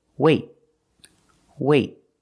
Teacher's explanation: Then we do a stop T. That means you put your tongue up in the T position, but you don't release.